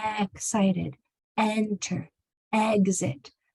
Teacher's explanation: The E sound, your mouth is going to open medium.